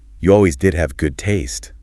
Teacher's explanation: with the stress on did for emphasis. It's like a playful tease because they both like the same shirt.